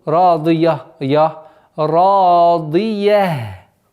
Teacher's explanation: Нужно обращать внимание, чтобы я после звука дад не было твердым.